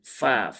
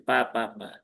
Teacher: Dipastikan fa ya, bukan pa. Ujung lidahnya bertemu dengan bibir bawah ya. Tapi bukan yang di sini ya, bukan yang di luar, tapi yang di sini ya, di dalam sini. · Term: huruf fa